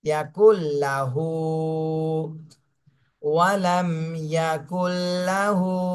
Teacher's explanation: এটা মদের হরকত এক আলিফ টান দিতে হবে